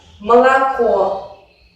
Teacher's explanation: Pero si una vocal está en la posición átona, entonces sí que sufre algunas modificaciones. O y A en la posición átona se pronuncian como una A muy breve y muy relajada · Solo se pronuncia de una manera plena la última vocal O, que es tónica, y el resto se reducen.